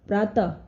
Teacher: विसर्ग का उच्चारण ह ध्वनि के जैसा होता है